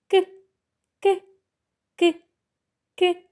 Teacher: зараз давайте повторимо артикуляцію звукаки хто пам'ятає як ми вимовляємо звуки губи та зуби розімкнуті кінчик язика за нижніми зубами а задня частина спинки язика підіймається вгору до м'якого піднебіння голосові зв'язки не вібрують · зубами а задня частина спинки язика підіймається вгору до м'якого піднебіння голосові зв'язки не вібрують вимовляємо к к к к